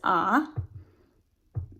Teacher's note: when we think about the rhyme for star it's a low back vowel